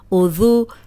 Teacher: اب ذال نرم ہے، اوپر سامنے کے جو دو دانت ہیں ان کے کنارے پہ زبان رکھیں اور ادا کریں تو سیٹی کی آواز نہیں آئے گی